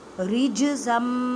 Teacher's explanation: جیم ساکن ہے تو قلقلہ کریں، مینس کہ آواز کو ہلا کر پڑھیں، رج نہیں کہنا، رجزم۔